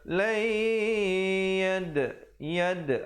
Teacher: Dal bertanda sukun, bertanda mati, qalqalah sughra.